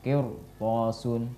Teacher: ada rok sukun didahului oleh kasrah, kemudian setelahnya ada huruf isti'la yaitu huruf to, maka juga dibaca dengan tebal roknya